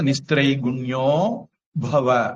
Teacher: அதுக்கப்புறம் வல்லின வரல. அப்போ அக விசர்க்கம் ஓவா மாறும், நமோ நாராயணா மாதிரி. அப்ப நிஸ்திரை குண்யோ பவ அப்படின்னு மாறும்.